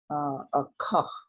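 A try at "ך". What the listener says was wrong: Remember, if it's at the end of a word, it's always silent. They're putting that shiwa in there with that final form cough.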